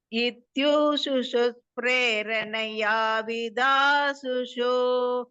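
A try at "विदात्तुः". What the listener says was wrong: விதாசு இல்ல விதாத்துஹு. விதாத்துஸ்ங்கிறதுக்கு பதிலா இஸ் அடிச்சுடுங்க, விசர்க்கம் போட்டுக்கோங்க. துஹு.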